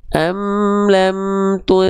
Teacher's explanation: karena di sini ada ikhfa hakiki, maka bunyi an-nya kita samar dengungkan.